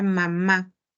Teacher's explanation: Porque, a ver, en el caso de la palabra mamá, Si lo hacemos por separado, sabemos que el sonido de la M es ¿no? Claramente estamos identificando que se juntan los dos labios. Es el sonido de la M, una bilabial, ¿no? Pero al juntarse con la A, ya esa bilabial se obstruye, y luego sale el aire y suena la sílaba completa, mamá.